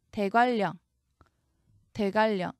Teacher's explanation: 이 한글 표기 그대로 옮기시면 안 됩니다. 읽으시면은 유음화가 일어나서 니은이 리을로 변하죠.